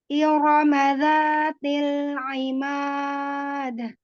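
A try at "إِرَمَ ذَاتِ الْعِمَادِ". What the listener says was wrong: Ya, masih aimad, masih ke hidung huruf ainnya aimad. Tidak tidak aimad.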